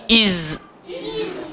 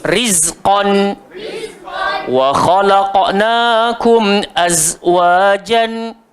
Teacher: Hujung lidah, langgar belakang gigi bawah, dan sifat dia safir, berdesir.